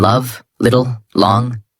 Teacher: The tip must touch the upper teeth ridge gently. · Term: L sound